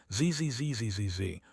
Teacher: Do you feel that buzzing, that vibration? That is voiced.